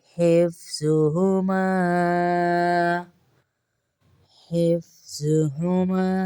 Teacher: ہا کی آواز دیکھ لیجیے گا الگ ہے، اس ہا کو ہم سینے سے ادائیگی کریں گے.